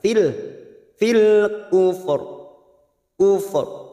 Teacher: ini kita lunakkan huruf fa dan huruf ro, dan huruf ro ini kita baca tafkim atau tebal.